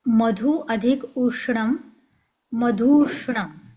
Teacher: मधुचा पहिला ऱ्हस्व उ आणि पुढचा पण ऱ्हस्व उ दोन्ही मिळून मधुष्णम असा दीर्घ उ झाला त्याचा